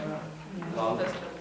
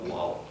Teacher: it's not our American L, la, it's more dental L, I guess you would say, la, just make sure it's, as opposed to lol, yeah.